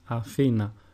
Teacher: the emphasis is put on the second syllable and not on the first or the third